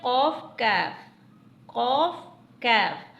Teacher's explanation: जबान की जड़ और तालू से अदा होते हैं